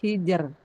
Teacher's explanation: kalau yang sebelum ro-nya huruf istifal, contohnya hijer, itu enggak ada perbedaan, semuanya tipis. Ro disukunkan, sebelumnya sukun, sebelumnya kasroh.